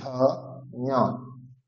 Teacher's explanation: ঞ এর ক্ষেত্রে তালু এবং নাসিকা, নাকে উচ্চারণ হবে, তালু এবং নাক থেকে উচ্চারণ হবে ঞ।